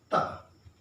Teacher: ता अघोष ध्वनि है